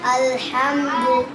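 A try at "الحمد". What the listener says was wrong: আরো বলেন হা হয় না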